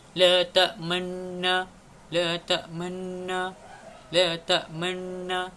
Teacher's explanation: Pada asalnya la ta'manna ini mengandungi 2 nun, dan apabila hadirnya hukum raum ini, kita perlu membacanya dengan menyembunyikan huruf nun tersebut